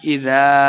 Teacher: اذا الف مدہ ہے 2 حرکات لمبا کر کے پڑھیں گے